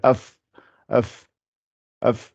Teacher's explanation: le fa, c'est l'extrémité des dents du haut avec l'intérieur de la lèvre du bas. Ça fait af, af, af.